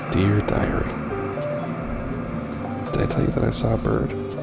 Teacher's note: Yeah, this very kind of like super compressed, breathy, like under your breath, kind of like whispering little vows of revenge